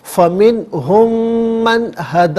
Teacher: اور من میں بھی جو نون ساکن ہے اس کے بعد ہا ہے، حرف علقی ہے، تو ناظرین نون ساکن پر یہاں اظہار کریں گے، غنہ یا اخفا نہیں کیا جائے گا